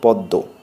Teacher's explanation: ম ব অন্তস্থ জ, যুক্তাক্ষরের মধ্যে এগুলো যখন ফলা হিসেবে অর্থাৎ ম ফলা ব ফলা জ ফলা হিসেবে ব্যবহৃত হয় তখন সাধারণত এগুলো অনুচ্চারিত থাকে এবং এদের পূর্ববর্তী ব্যঞ্জনের দ্বিত্ব হয়। ম ফলার স্থলে এই যুগ্ম উচ্চারণ আনুনাসিক হয়। যেমন পদ্ম প দয়ময় পদ্ম, পড়তে হবে প দ দয় চন্দ্রবিন্দু।